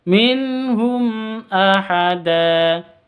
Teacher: mim mati bertemu dengan Hamzah izhar syafawi jelas bacanya mim matinya jelas hamsnya juga jelas tidak boleh didengungkan minhum Ahada da Mad Iwat